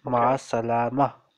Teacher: Last vowel is silent. We ignore last vowel.